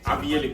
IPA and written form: aʋijal (Avial)